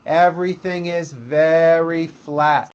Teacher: use a flat intonation pattern or a monotone